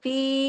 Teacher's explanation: इसके साथ तो या मद्दा है ना, दो हरकत खींचेगी